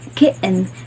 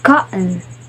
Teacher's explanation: the T is followed directly by a syllabic N, so may be produced as a glottal stop, meaning this word could end up sound like more kitten.